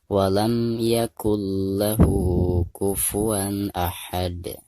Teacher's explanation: ketika kita membaca mim sukun di sini, itu harus dijelaskan karena dihukumi izhar syafawi